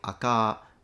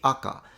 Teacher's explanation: it's similar to Japanese but the pitch is opposite when compared to standard so here he's saying akka in standard Japanese it would be